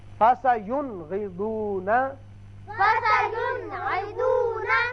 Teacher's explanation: نون ساکن کو ہم نے ظاہر کر کے پڑھا